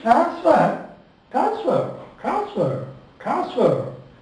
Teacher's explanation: In the word transfer, that the N is very lightly sounded, lightly pronounced.